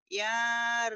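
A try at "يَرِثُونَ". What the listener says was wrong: Kenapa yanya panjang, ayo. Emang yari, panjang, Bu.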